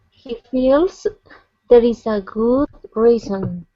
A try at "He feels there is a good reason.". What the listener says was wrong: Okay, much better with reason there. Good. Okay, nice job with the long E. Okay, focus on your R's though.